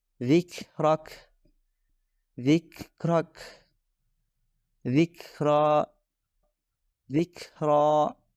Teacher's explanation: kita menyebutnya Hames dan ini akan terdengar jelas ketika Kaf masuk ke posisi sukun